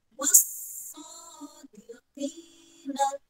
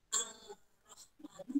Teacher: Kalau syamsiah langsung masuk ke huruf syamsiahnya. Al-nya tidak terbaca. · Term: idgham syamsiah